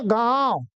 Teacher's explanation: अनुनासिक में नाक से कम हवा निकलती है और मुख से ज्यादा